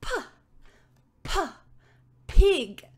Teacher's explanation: we're not going to be really using any vibration it's just going to be air